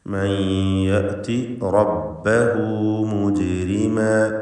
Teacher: റാഇനെ തടിപ്പിക്കണം, തഫ്ഖീം ചെയ്ത് സ്വരഭാരത്തോടെ ഉച്ചരിക്കുക.